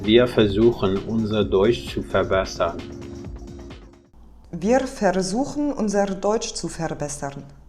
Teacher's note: she pronounces every single R as a trill, as if the trill R is the best enunciated pronunciation of R.